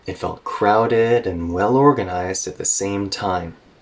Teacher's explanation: we have two adjectives here connected with and when we have that, they're usually both spoken with kind of a high tone, and usually there's another dipping or rolling intonation there.